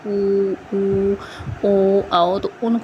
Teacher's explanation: वृत्त मुखी और अवृत्त मुखी जिसमें वृत्त मुखी जिसमें जो हमारा ओष्ठ है वो वृत्त की तरह गोल मतलब गोल जो है वो हमारे लिप्स हो जाते हैं।